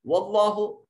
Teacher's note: اس میں جلالت کا ماقبل مفتوح ہے، اس کو مفخم پڑھا جائے گا۔